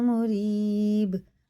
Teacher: با میں قلقلہ اور را زیر کے ساتھ باریک ہے